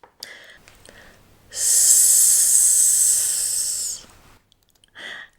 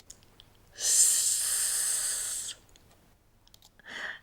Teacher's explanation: the tip of the tongue presses very lightly against the alveolar ridge, but leaving a small gap for the slow release of air pressure. If you don't leave that tiny gap, the air will be blocked and you won't be able to make this slow release sound.